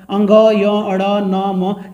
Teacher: ये सब नाक और मुंह से बोला जाता है, ठीक है, नाक से बोला जाता है। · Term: पंचमाक्षर